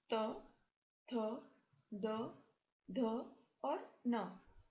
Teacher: इन सभी वर्णों का उच्चारण दांत से किया जाता है, इसलिए इन्हें दंत्य वर्ण कहते हैं।